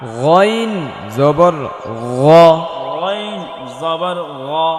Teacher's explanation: ল, আইন জবর আ, আইন জবর আ, গইন জবর গ, গইন জবর গ, জিব্বার গোড়া উপর লাগিয়ে হলকের শেষ হইতে, জিব্বার গোড়ার একেবারে পাশাপাশি হলকের শেষ হইতে গ